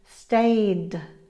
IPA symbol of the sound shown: d